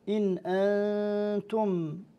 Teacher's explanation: إذا قرأنا لقالون نسكن هذه النون ونظهرها ونحقق الهمزة بعدها · مع إخفاء النون الساكنة قبل التاء وإسكان ميم الجمع الواقعة قبل همز القطع